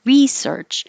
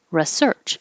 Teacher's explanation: nouns usually have stress on the first syllable like research and verbs usually have stress on the second syllable like research however you hear americans use both of these in both parts